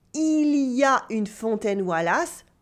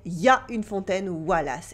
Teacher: Then the il y a becomes ya.